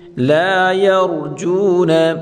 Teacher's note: لا الف مدہ ہے، ایک الف کی مقدار کھینچ کر پڑھیں گے۔ یرجون، را یا کو را کے ساتھ ملا کر پڑھیں گے، اور را کو یہاں پر پڑھیں گے۔